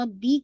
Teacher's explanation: रब्बी का बा को आपने ट्वाइस पढ़ना है और रा को हैवी करना है